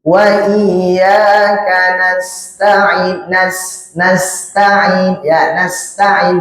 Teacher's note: Kemudian nasta'innya huruf sin merupakan huruf yang memiliki sifat sofir. Huruf bersiul ya.